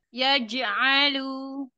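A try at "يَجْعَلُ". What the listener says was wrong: Iya, jangan ada c c c. Jim. Ya, Jim.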